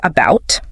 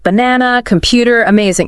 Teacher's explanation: syllable is about but the unstressed a that's pronounced as awah it's like a very short uh very neutral uh sound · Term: schwar sound